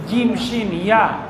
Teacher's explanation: জিব্বার মাঝখানটা তালুর সঙ্গে লাগিয়ে